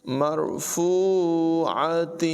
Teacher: را کو پر پڑھیں گے اور یہاں پر واو مدہ ہے، فا کو ایک الف کے مقدار لمبا کریں گے